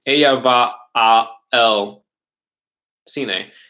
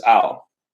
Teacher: when they say a and el, they just smash together. They make one word out of it, and that word is al.